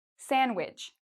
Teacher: We say sandwich. So the D is silent.